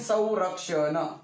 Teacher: या अनुसाराचा उच्चार व सारखा झाला